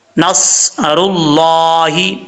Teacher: اذا جاء نصر اللہ، نون کے بعد صاد ہے، صاد حروف مستعلیہ میں سے پر پڑھا جائے گا۔ اس کا مخرج ہے زبان، سادہ لفظوں میں آپ کو میں بتاتا ہوں کہ زبان، آپ کی زبان کا جو سیدھا ہے یہ اوپر والے دانتوں سے بھی نہ لگے، نیچے والے دانتوں کے کنارے سے بھی نہ لگے، یعنی دانتوں سے ٹچ نہ ہو، نہ اسے ملے۔